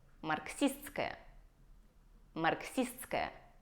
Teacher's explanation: И наше «с-т-с-к» превращается в «ск».